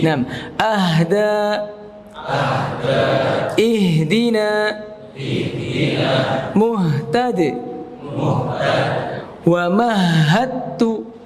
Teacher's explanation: dia punya sifat hams. Jadi udara mengalir. Bahkan kalau antum membaca huruf ha itu sering habis nafasnya.